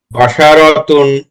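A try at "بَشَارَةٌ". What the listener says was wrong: জি মাশাআল্লাহ।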